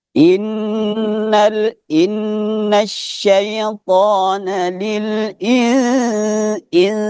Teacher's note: Jadi langsung di di mulut kita ini ambil ancang-ancang untuk penyebutan huruf sin insa in. Jadi ikhfanya itu lari ke hidung seperti orang sengoh toh.